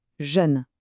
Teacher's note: un J doux et des lèvres bien arrondies pour le E.